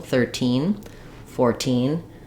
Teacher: So 13 and 14, typically you're going to see kind of secondary stress on the first syllable, primary stress on the second syllable